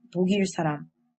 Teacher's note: However, Korean people actually pronounce this word as 독일 사람. What happens is that the 기역 character moves to the next syllable. This is called resyllabification.